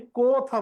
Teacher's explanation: বিকৃত উচ্চারণ বা বিবৃত উচ্চারণ মানে অ এ দুই রকম উচ্চারিত হয়, অ এর মতো উচ্চারিত হয়, অ ও এর মতো উচ্চারিত হয়। আমরা জানি ও বললে ঠোঁট গোল হয়, কিন্তু অ বললে ঠোঁট একটু বড় হয়, বড় হইলে বিবৃত বা বিকৃত। তার মানে অ যদি অ হয় তাহলে মুখ বড় হয়, দুই ঠোঁটের দূরত্ব বাড়ে, বাড়লে বিবৃত।